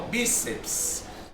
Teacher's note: Perceba que a sílaba tônica é o bi